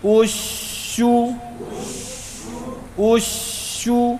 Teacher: بیچ میں جو شد کا ٹھہراؤ پر وہاں پر ہونٹ گول نہیں کرنا ہے